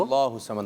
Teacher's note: اور اللہ کا نام جیسے اللہ الصمد یہ پر کریں گے اس کو، اللہ الصمد موٹا ہوگا.